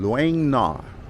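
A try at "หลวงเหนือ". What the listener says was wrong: Luang Nuang. It's gotta be nasal.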